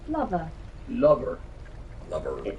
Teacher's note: at the end of the word lover i'm doing the schwa ending which we would normally do for an er ending but thomas curling into the r